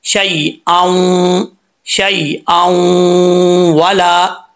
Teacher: जब इसको मिलाएंगे तो बीच में जो अलिफ है वो भी गिर जाएगा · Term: गुन्ना